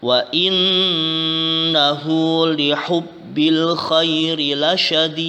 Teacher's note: Inna adalah gunnah karena nun yang bertasydid